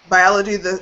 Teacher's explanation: Biology, it falls in the second syllable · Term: stress